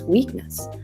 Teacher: so the stress is on the first syllable